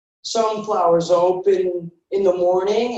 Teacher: did you hear that connected speech sunflower is open the S is carrying over